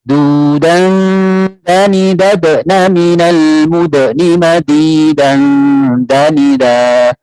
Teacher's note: Da, di, du, tidak boleh. Jadi turunnya pangkal lidah, istifal namanya. Jadi lidah kita turun, tidak boleh terangkat. Meskipun ini ujung lidah mengenai pangkal, 2 gigi dari atas, tapi kita punya sifatnya turunnya pangkal lidah.